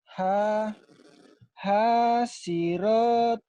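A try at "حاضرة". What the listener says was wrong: Hadirati. Ada titiknya Mas, bukan hasiroti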